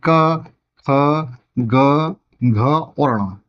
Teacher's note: जीभ का पिछला, जीभ के अंदर वाला भाग होता है वो पिछला भाग, हमारे कंठ को छूता है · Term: कंठी व्यंजन